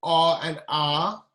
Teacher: velar or gluteral vowels, pronounced near the back of the throat